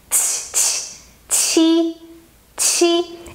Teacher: the sound she is more aspirated so you have to send the air aspirated means that you have to send air from your mouth